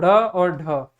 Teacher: ढ और ढ का जब हम उच्चारण करेंगे तो हमारी जो जीवा है वो एक बार ऊपर उठती है और वो तुरंत नीचे गिरती है, एक झटके के साथ नीचे गिरती है, इस कारण ढ और ढ को हम जो है उत्सिप्त व्यंजन कहते हैं।